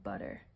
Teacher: think of how the T is pronounced in the word butter. Just kind of that indistinct t-d sound. And that's the sound that I'm going to use for my sound. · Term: flap